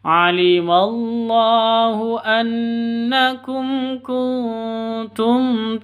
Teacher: mim mati bertemu dengan Kaf cara bacanya jelas terang tidak boleh dengung karena izhar SFA izhar syafawi alimallahu annakum kuntum takhtanuna nun mati